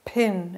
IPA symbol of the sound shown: pʰ